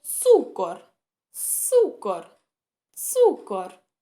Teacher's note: всі звуки приголосні ц к р у нас тверді